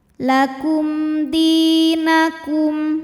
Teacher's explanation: karena ada ya sukun didahului baris kasrah. Maka huruf dal panjang 2 harokat